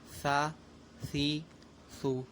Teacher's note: یہ تینوں حرف بھی ان کی تینوں حرف کی آواز بھی ایک دوسرے سے ملتی جلتی ہے، تو ان میں بھی فرق کیا جائے گا، اور فرق اس طریقے سے ہوگا کہ سا ذا کی طرح ذال کی طرح ادا کیا جائے گا، یعنی آپ اپنی زبان کی جو نوک ہے وہ اوپر کے دونوں دانتوں کے اندرونی کنارے پر لگائیں